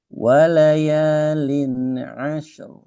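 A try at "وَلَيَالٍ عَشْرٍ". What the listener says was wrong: Masih kurang, kurang aliran sedikit lagi. Walayalin asyru.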